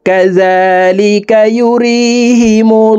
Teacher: হইলে এই লামকে ল অর্থাৎ মোটা করিয়া পড়িতে হয়। তো আমরা এই লামকে ল বলে অর্থাৎ মোটা করে পড়ব।